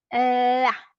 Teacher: la punta de mi lengua se coloca, se posiciona detrás de mis dientes superiores